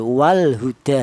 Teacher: Jadi lam matinya dibaca jelas. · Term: izhar qamariah